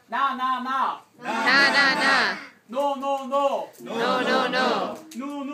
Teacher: the tip of my tongue is touching the top of the front of my mouth